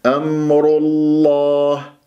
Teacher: شوف لما قلت لكم إذا جاء مثلا حروف المستعلاة خص ضغط انقض قبل اسم الجلالة الله تكون مفتوحة ومضمومة نفخمها، والراء ترقق وتفخم أحيانا. الآن الراء راح أنطقها مفخمة وأنطق اللام من اسم الجلالة الله مفخم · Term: الراء مفخمة